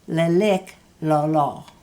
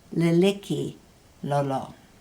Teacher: the k is the special glottalized k